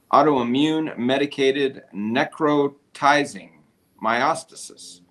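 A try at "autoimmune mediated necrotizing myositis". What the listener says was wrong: Yeah, that's autoimmune mediated necrotizing. You said medicated.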